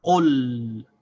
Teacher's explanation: So there's no break between the vowel sound of the qaf and the consonant sound of the lam. So we say qul as one syllable.